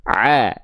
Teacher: huruf ain tepat dilafalkan dari bagian tengah tenggorokan kita. A jangan sampai tertukar dengan hamzah.